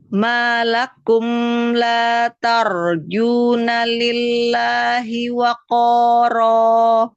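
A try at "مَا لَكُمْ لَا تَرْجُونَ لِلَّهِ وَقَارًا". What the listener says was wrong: Taknya tipiskan, ro-nya tebal. La tarjuna, taknya kasih hamas tipiskan. Tipiskan taknya.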